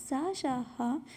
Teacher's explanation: सा, शा, हा ये ऊष्म और संघर्षी व्यंजन है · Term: ऊष्म संघर्षी